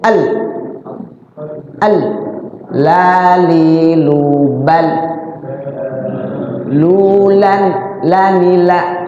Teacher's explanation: Lam tuh kalau sukun nempel di langit-langit. Jangan dilepas.